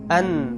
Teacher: মূলত নুন হরফের উচ্চারণ যখন আমরা করব, হরফের নাম উচ্চারণ করার সময় ঠোঁট গোল হবে, কিন্তু যখন হরফের উচ্চারণ করব না নি, এই যে ঠোঁট গোল হচ্ছে না, ঠোঁট নড়বে না, ঠোঁটের সাথে এই হরফের কোনো সম্পর্ক নাই। হারকাত দিয়ে অথবা সাকিন দিয়ে যখন উচ্চারণ করব না নি আন, ঠোঁটের সাথে কোনো সম্পর্ক নাই, ঠোঁট গোল হবে না।